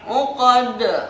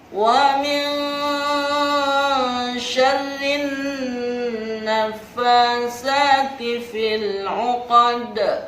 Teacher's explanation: Huruf dal berada di akhir kalimat, memantul, disebut qalqalah kubro, memantul dengan sangat besar.